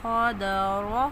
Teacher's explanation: گے، خدر، حرکات کو جلدی پڑھیں گے، دواد موٹا پڑھیں گے، را موٹا پڑھیں گے کیونکہ را کے اوپر زبر آ رہی ہے